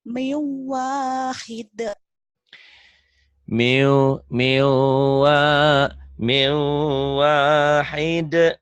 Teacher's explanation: nun mati tertanwin kita bawa idgham bigunnah ya. Mien jadi miu.